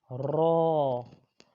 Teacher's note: زبان کا کنارہ، اوپر کے دانتوں کی جڑ کہ تعلق کی جانب والے حصے سے یہ ادا ہوتا ہے را، اور یہ بھی موٹا پڑا جائے گا۔